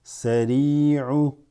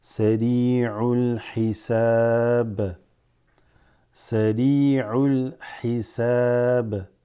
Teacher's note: This ya has a sukoon, so it extends the e sound from the ra.